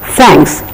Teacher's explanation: the tip of the tongue has to come out of the lips and there is slight release of air